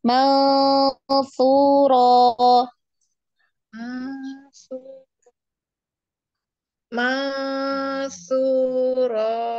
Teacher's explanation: Su-nya jangan terlalu panjang. 2 harokat berarti di ayun aja.